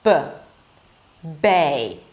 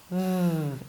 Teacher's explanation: But the main difference between the two is that for the B, you block the air, B, and release it abruptly.